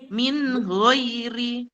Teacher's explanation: Berikutnya adalah ketemu ghain ya. Ghain naik ke atas lagi nih di tenggorokan kita. Huruf ghain, nun sukun ketemu ghain, min ghairi.